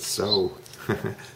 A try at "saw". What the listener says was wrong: Saw. It's not so because so is up here. It's O. This is aw. And I want you to move your mouth down.